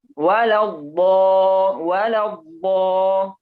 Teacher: makharijul huruf dhad itu adanya di tepi lidah dengan gigi geraham atas, baik mau kanan atau kiri atau dua-duanya. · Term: harful dhad